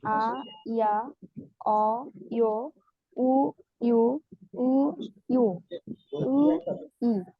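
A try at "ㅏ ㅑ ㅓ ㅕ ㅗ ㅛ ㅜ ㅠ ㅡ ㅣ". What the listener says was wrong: আচ্ছা, আপনার উচ্চারণটা শুনে আমার কাছে একটু কারেকশন আছে। এই যে এইটা আর এইটা একই রকম মনে হইলো আপনার কাছে, উ উ এরকম মনে হয়েছে। প্রথমটা হবে ও ইউ, ও ইউ, ও ইউ। আর এরপরের যেটা হবে উ ইউ, উ ইউ এরকম।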